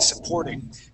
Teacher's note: very good job with your T Sounds here changing that to a D sound